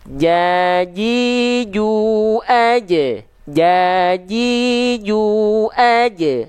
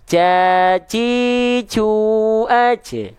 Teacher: Tengah lidahnya disentuhkan rapat-rapat, lengket-lengket ke tengah langit-langit di atasnya. Begitu. Jangan sampai ada celah. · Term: huruf jim